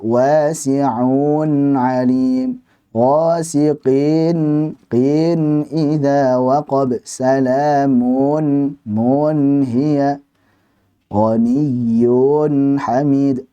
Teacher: kasrahnya yang sebelum suara nun sukun tersebut dibaca panjang, ini salah